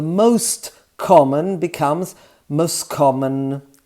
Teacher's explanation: the most common becomes most common eliminating the t